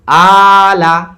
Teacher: আ, টান হয়ে গেল, লা তাড়াতাড়ি শেষ।